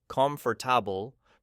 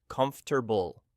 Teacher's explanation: Natives almost delete entire syllables.